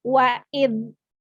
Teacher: dzal di sini bukan termasuk huruf qalqalah, maka ketika dia sukun tidak boleh dipantulkan. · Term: Dzal sukun